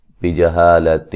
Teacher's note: یہاں نون تنوین کا باریک اخفا ہے